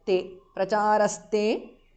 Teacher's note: visarga changes to s there, te, pracharaste because of Sandhi.